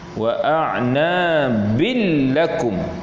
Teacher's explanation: baris tanwin itu masuk dalam lam tapi tak ada dengung, namanya idgham bila ghunnah.